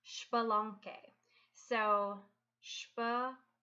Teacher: You can see how that X at the beginning actually just makes a sh sound, and then you pronounce the rest of it as you would expect, with the QUE making a hard K sound.